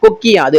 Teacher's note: அந்த உகரம் வந்து இகரமா மாறிடுச்சு தனக்குரிய அந்த மாத்திரை அளவில இருந்து குறைந்து ஒளிச்சிருச்சு · கொக்கு கூட்டல் யாது, கொக்கி யாது, அந்த கூ வந்து கீயா மாறுது, இகரமா மாறுது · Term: குற்றியல்கரம், குற்றியலிகரம்